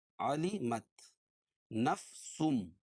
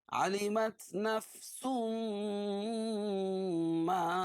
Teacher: تنوین کے بعد ادغام مع الغنہ کے 4 حرفوں میں سے میم ہے، اس لیے غنہ کر کے پڑھیں گے